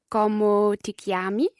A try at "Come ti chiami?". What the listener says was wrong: Como? I think maybe your Spanish is influencing you there. So, come ti chiami?